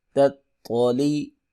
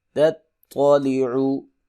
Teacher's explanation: تا ہے دو نقطوں والی اس کو باریک پڑھتے ہیں اور طا کو موٹا کر کے پڑھتے ہیں